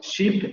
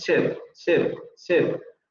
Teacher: Podríamos decir que está entre nuestra E y nuestra I.